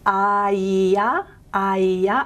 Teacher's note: it's an approximant here, but it also gets called a semi-vowel, half vowel, because it can be derived from the vowel I. So palatal front vowels like I are produced in the palatal region.